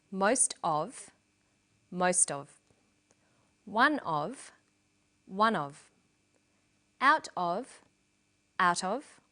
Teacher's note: in sentences these phrases will usually become linked together